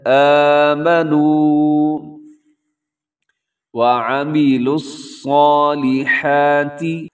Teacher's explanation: آمنوا لمبا کرنا ہے، واو مدہ ہے